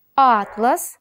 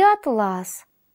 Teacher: слов Атлас и атлас это связано с различием ударных звуков А в первом слове ударение падает на первый звук а во втором на второй